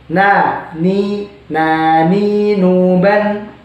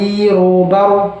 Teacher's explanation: huruf lam, nun, ro itu sama-sama lidahnya itu harus nempel ke gigi dan juga gusi bagian depan atas.